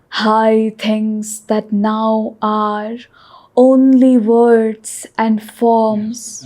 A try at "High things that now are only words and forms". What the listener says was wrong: Yes, you broke that line a little too much. High things that now are only words and forms I revealed to her.